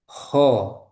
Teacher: huruf kho keluar dari tenggorokan bagian atas.